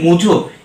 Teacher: যেমন মোজা থেকে হয়ে গেছে মুজো, এখানে যেমন ওকারটা পরিবর্তন হয়ে উ হয়েছে এবং আকারটা পরিবর্তন হয়ে ওকার হয়েছে, অর্থাৎ দুটোই পরিবর্তন হয়েছে। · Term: অন্যান্য স্বরসঙ্গতি